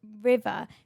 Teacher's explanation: you're doing your R's with your top teeth in your lip